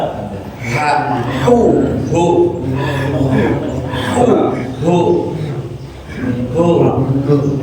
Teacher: huruf h naikkan dikit ditenggorokan bukan suara dikencengin